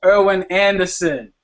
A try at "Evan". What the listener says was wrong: Evan, no R. It's Evan. You threw an R in there.